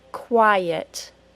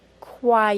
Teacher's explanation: syllable I - the first sound of the second syllable ah the way to join them is to add a little Y sound between the syllables now we have quiet do you hear that Y sound quiet